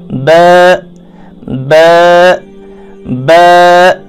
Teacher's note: با دونوں ہونٹوں کا تری والا حصہ